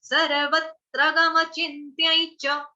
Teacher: च अपने आप में ह्रस्व है, इसको लटकाना नहीं है, ऐसे नहीं बोलेंगे सर्वत्र गम चिन्त्यै च, ऐसे नहीं गाएंगे।